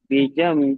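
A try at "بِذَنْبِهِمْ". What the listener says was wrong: ওখানে কিন্তু একটা গুন্না আছে, গুন্নাটা সবাই ছেড়ে দিচ্ছেন। বিদাম, বিদাম, বিটা টান নেই, বিদাম।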